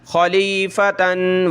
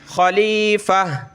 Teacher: جب وقف کریں گے تو ہا بن جائے گی، ٹھیک ہے. تا دو زبر تن خلیفتن وقفن، یہاں وقف ہو رہا ہے ہمارا تو کیا ہوگا خلیفہ، گولتا ہا بن گئی، ٹھیک ہے.